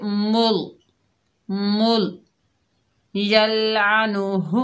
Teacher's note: मीम के ऊपर पेश है, आगे अल्लाह का लाम है, मीम को अल्लाह के लाम से मिलाएंगे। पेश आने की वजह से अल्लाह का लाम मोटा पढ़ा जाएगा।